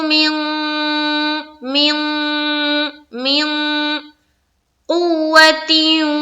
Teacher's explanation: इख्फा करना है, यानी कि नाक में आवाज को छुपानी है